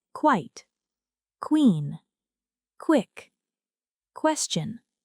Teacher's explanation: Qu, as in quite, queen, quick, question. The sound begins with k and moves immediately into w.